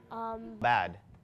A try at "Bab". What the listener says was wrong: There's no D or G. It's Bab.